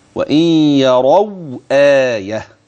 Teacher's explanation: يبقى احقق الهمز وابين السكون اللي قبله